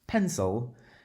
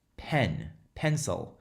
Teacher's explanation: When we say pencil, there's one of the syllables that gets more emphasis than the other. And so pencil there's a certain stress to that first syllable.